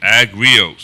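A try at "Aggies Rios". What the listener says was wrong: Yeah, no, there's no R. There's just like Texas Aggies.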